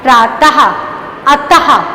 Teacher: शब्द के अंत में तो छोटे छोटे से बिंदी हैं लगाए जाते हैं, जिस कारण इनका उच्चारण हा की तरह होता है। प्रातः, अतः आदि शब्दों में विसर्ग का प्रयोग किया जाता है।